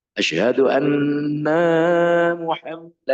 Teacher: itu sudah salah nunnya dipanjangkan lebih dari satu harakat